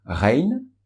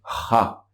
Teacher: La différence entre Rein et Ra, pratiquement la bouche a la même position. L'air sort du fond de la gorge, mais simplement avec Ra, il y a beaucoup plus d'air qui est expulsé et beaucoup plus rapidement. C'est ce qui crée la différence de son entre Rein et Ra.